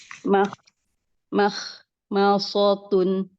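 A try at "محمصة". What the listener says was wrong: Tebalkan lagi kho-nya.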